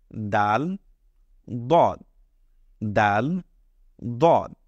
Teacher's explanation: আমাদের যে উপরের মাড়ি রয়েছে এই মাড়ির সাথে এই দাল এবং দ্বের উচ্চারণের সম্পর্ক রয়েছে অর্থাৎ এখান থেকেই দাল এবং দটা উচ্চারণ করা হয় তাহলে আপনারা